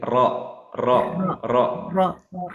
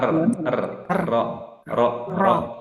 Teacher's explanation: Nah, takrir itu adalah sifat yang melekat di huruf ro, di mana takrir ini adalah getaran di ujung lidah.